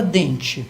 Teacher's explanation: Você tem escrito com E, mas todo mundo pronuncia como se fosse I